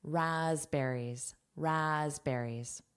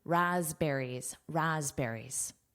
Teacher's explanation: did you notice that S is voiced? So it actually sounds like a Z